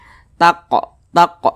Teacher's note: dia sukun dipantulkan cara bacanya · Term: Qalqalah sugro